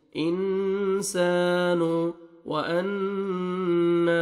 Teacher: नून मुशद्दद है, गुन्ना करेंगे